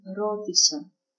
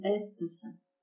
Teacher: the accent in the past moves one syllable to the left